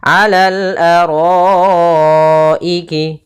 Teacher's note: mad yang wajib kita baca dengan panjangnya 4 harokat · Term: mad wajib muttasil